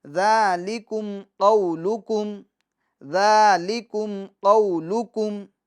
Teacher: قو، یہ قو میں واو لین ہوگا کیونکہ واو ساکن سے پہلے والے حرف پر زبر ہے تو واو لین ہوگا، اور حرف لین کو جھٹکا دیے بغیر اور نرمی کے ساتھ ہم پڑھیں گے، بغیر کھینچے ہوئے پڑھیں گے